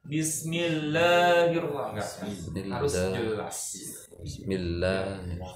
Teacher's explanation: Dan bacaannya juga kalau itu harus vokalnya harus jelas gitu ya, kasroh ke i, jangan ke e ya, jangan sampai miring gitu ya. Jangan ti, jangan kayak misalkan bismillah, kadang la-nya itu ada yang ke le gitu ya.